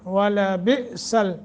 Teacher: حمزہ ساکن ہے، جھٹکا دے کر پڑھیں گے